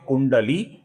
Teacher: इसमें कु ह्रस्व है और ली दीर्घ है